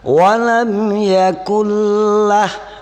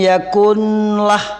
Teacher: ini tidak boleh berdengun di nun karena ada huruf la. Ya, dimasuki oleh huruf la. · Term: idgham bila gunnah